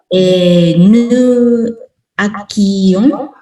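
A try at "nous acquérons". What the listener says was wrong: Acquérons. There is an air here. Acquérons.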